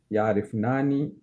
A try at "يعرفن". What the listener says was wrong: No. You're making it long.